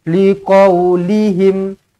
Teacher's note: Mim mati izharus syafawi. Matikan dengan jelas dan terang.